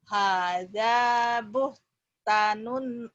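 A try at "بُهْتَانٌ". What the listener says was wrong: Buh, panjang.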